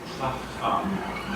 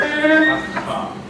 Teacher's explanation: The first comes from high up in the palate, and the second one comes from down in the throat. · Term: gutturals